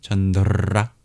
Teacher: All the R's in Sanskrit are made retroflex, so you hear a little roll, chandra. You obviously don't have to extenuate it like I've done there.